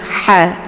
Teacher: Kemudian ha biyatat, maka ini ha, ya, ini jangan dibaca ha, tapi ha-nya yaitu berada di posisi tenggorokan bagian tengah sejajar dengan huruf ain, ya, ha. Jadi ada suara yang mengalir, yaitu berdesis angin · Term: hamas